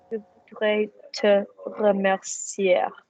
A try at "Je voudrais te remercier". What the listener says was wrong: Remercier. Don't pronounce the R. We're not Spanish yet. And again.